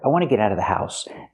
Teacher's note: We hear the T in get and the T in out pronounced as fast D's.